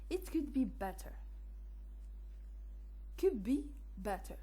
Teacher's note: D changes to b before the bilabial p, b, m, the same. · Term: Regressive assimilation